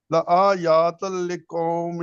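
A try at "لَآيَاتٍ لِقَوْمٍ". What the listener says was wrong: لا نہیں لآیت لقوم، یا کو چھوٹا رکھے.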